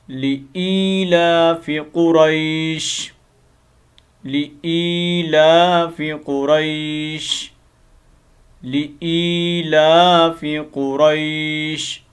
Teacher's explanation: حمزہ زیر یا ای، اس ای کو تھوڑا لمبا کرنا ہے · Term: حروف مدہ